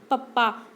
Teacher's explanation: ਜਦੋਂ ਆਪਾਂ ਬੋਲਦੇ ਹਾਂ ਪਪਾ ਤਾਂ ਆਪਣਾ ਦੇਖੋ ਦੋਨੋਂ ਲਿਪਸ ਕੀ ਹੈ ਟੱਚ ਹੁੰਦੇ ਹਨ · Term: ਉੱਠਾਂ ਵਾਲੀਆਂ ਧੁਨੀਆਂ